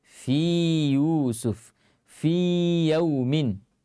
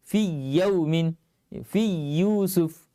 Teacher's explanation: Jadi tetap dibaca seperti biasa. Dipanjangkan 2 harakat seperti mad tabi'i.